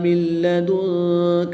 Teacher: نون ساکن کو لام مشدد میں مدغم یعنی شامل کر کے پڑھیں گے۔ یہاں پر نون ساکن میں ادغام بلا غنہ کا قاعدہ ہوگا، یعنی کہ یہاں پر غنہ نہیں کریں گے۔ · نون ساکن کے بعد کاف حروف اخفا میں سے ہے تو یہاں پر اخفا ہوگا، یعنی غنہ زمانی کر کے پڑھیں گے